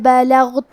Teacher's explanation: کلمت بلغت میں یہاں غین ساکن ہے تو ہمیں غین کو ظاہر کرنا ہے اور ہم اسے موٹی آواز میں پڑھیں گے